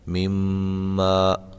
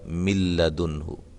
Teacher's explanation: اس میں غنہ کیا گیا ہے مما، اور اس میں غنہ نہیں کیا گیا مل لدنہ